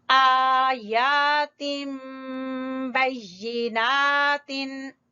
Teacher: आ को खींच रहे हैं अलिफ मद्दा, या को खींच रहे हैं अलिफ मद्दा, यानी खड़ी जबरें दोनों को बराबर खींचेंगे।